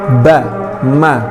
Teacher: Ketika mengucapkan ba sama ma, ini kondisi syafatain, a'dha'us syafatain itu muntabiqatan, terkatup atau tertutup.